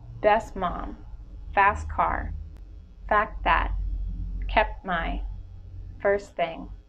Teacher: drop the T in between consonants between words